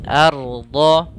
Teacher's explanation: kemudian arda, ro-nya tebal, a-nya tipis.